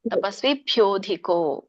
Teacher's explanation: ತಪಸ್ವಿಭ್ಯೋ ಹೇಳ್ತಾ ಇದ್ರೆ ಧಿಕೋ ಹೇಳಬೇಕು ತಪಸ್ವಿಭ್ಯೋಧಿಕೋ ಮತ್ತೆ ಗ್ಯಾಪ್ ಕೊಡಬಾರದು